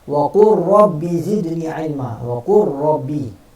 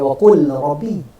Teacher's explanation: Kita tak baca wa qul rabbi, wa qur, idgham, berlaku idgham di situ. Lam fi'l bertemu dengan ra, kena idgham.